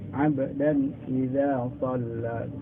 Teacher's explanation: itu tidak boleh dengung ya. Itu harus menjadi izhar ya.